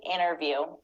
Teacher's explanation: we don't pronounce the T in American accent when it comes after the N